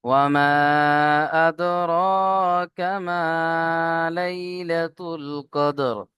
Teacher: ওয়ামা ও জেবার অ, মিম আলিফ জেবার মা, ওয়া মা, এখানে মাদ আছে। মাদের পরে হামজা দ্বিতীয় শব্দের মধ্যে এসছে বা ভিন্ন রূপে এসছে, তাই মাদ্দে মুনফাসিল 2 থেকে 3 আলিফ টান দেবেন।